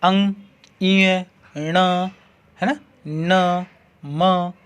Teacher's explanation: इनका हम उच्चारण कर रहे हैं तो अपनी जो ध्वनि निकल रही है वो नाक के द्वारा निकल रही है, इसलिए इन्हें हम नासिक्य वर्ण भी कहते हैं।